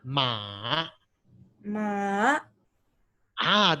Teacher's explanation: you must start with the tone going down and then going up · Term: tone number three